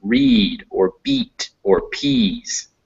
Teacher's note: Your tongue goes way up to the front of your mouth and near the roof. E, like in read or beat or peas.